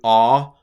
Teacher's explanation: A lot of Greek teachers go with aw for Omicron, just because that way you can distinguish it between the omega, which is a long O.